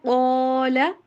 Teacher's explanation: قاف کو موٹا کر کے پڑھنا ہے